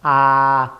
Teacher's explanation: A, y se llama así porque cuando pronunciamos el ángulo de abertura de la boca está en su máximo ángulo. Y la lengua cae a su punto más bajo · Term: vocal abierta